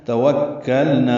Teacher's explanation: واو ہونٹ کی نا تمام گلائی سے ادا کریں گے، کاف سے ملائیں گے، کاف لام باریک نا الف مدہ.